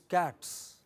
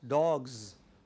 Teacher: After cat, it is pronounced as s, so that it is cats. But after dog, it is z. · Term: plural marker